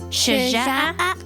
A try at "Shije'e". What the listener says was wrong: It kind of sounded like you were going up when you said it.